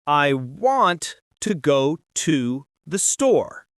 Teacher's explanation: Notice how we stress want, go, and store. The small words to andthe are weak.